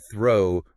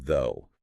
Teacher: Just air for the first word, air plus vibration for the second.